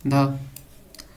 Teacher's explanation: दंत वतस्य महाप्राण घोष व्यंजन वर्ण का उदाहरण है